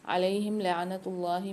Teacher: اللہ کے لام کو موٹا پڑھیں گے اور ساتھ میں کھینچ کے بھی پڑھیں گے